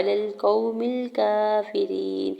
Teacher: मीम की ज़ेर को लाम साकिन के साथ मिलाते हुए पढ़ेंगे। काफ के ऊपर खड़ी ज़बर दो रकत खींच के अदा करेंगे। फ़ा की ज़ेर को बगैर खींचे हुए अदा करेंगे। · वाव साकिन से पहले क़ाफ के ऊपर ज़बर है, वावलीन हो रहा है, नरमी से मोड़ते हुए अदा करेंगे